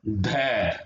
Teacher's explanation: ये आवाज हमारी जो है दंत पर से आ रही है, हमारी जीभ जो है दंत पर टकरा रही है